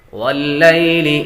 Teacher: یا کو لمبا نہیں کریں گے، یا حروف لیل میں سے ہے